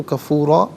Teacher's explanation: وَكَانَ الْإِنسَانُ کفوراً، را پر 2 زبر کی تنوین پر کر کے پڑھا جائے گا، وقف میں کفورا اس وقت بھی پر کر کے ہی پڑھا جائے گا، کفوراً، یہاں وقف کریں گے تو کفورا پڑھیں گے۔